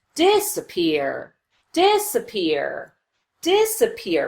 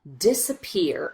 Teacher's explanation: We do spend some time on this syllable, and we do make the vowel louder and longer, but not quite as much as we do on this last syllable, the third syllable, peer. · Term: secondary stress